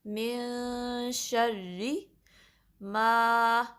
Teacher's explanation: را کے نیچے کسرہ ہے تو را کو باریک پڑھیں گے · باریک پڑھیں گے، من شر ما، میم پہ فتحہ ہے، پھر آگے الف مادہ ہے تو اس کو 2 کاؤنٹ سٹریچ کریں گے